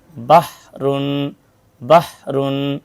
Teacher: हा की आवाज हलक से रगड़ कर रगड़ खाकर निकलती है